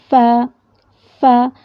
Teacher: سامنے کے دو دانت کے کنارے، ٹھیک ہے، اور نچلے ہونٹ کے اندرونی حصے کے ملنے سے ادا ہوتا ہے۔ دیکھیں ف، یہ جو دو دانت ہیں یہ بالکل ہونٹ کے اوپر آ جائیں گے، ف ادا ہوگا، ٹھیک ہے۔